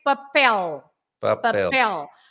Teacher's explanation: papel, because the last letter is an L. You have to stress the last part, papel.